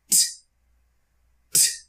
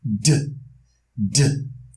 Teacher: So now we've determined voiceless, t, t, and voiced, d.